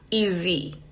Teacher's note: No decimos easy con ese, no. Sonido de Z.